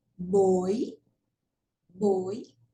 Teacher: de tongo decrescente como nós temos aí na palavra boi boi veja que o som mais forte é o que vem primeiro é o o boi e o i vai ser mais fraco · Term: ditongo decrescente